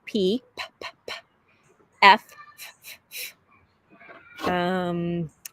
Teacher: helping her say the unvoiced sounds like P, p, p, p, F, because she tends to want to add her voice